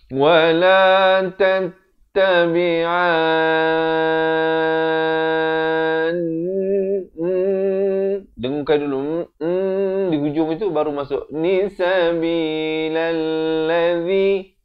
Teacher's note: bila masuk ke nun itu didengungkan dahulu, baru dibacakan nun itu baris kasrah.